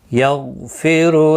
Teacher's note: غائن ساکن پر قلقلہ نہیں ہونا چاہیے، غائن مستعلیہ ہے، پر پڑھا جائے گا. پھر را پیش کی وجہ سے پر پڑھا جائے گا.